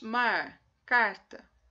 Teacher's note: Nós fazemos uma retroflexa. É uma vibrante em que há um movimento retroflexo da língua.